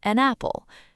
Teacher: Apple begins with the vowel sound A. Instead of saying an apple, we link them together to sound like an apple. It almost sounds like a brand new word, napple.